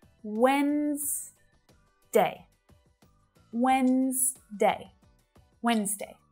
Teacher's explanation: We've got two syllables there, and that D is a silent letter.